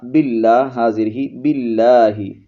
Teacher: لام یہاں پر لفظ اللہ کا باریک ہوگا کیونکہ لفظ اللہ کے لام سے پہلے زیر ہے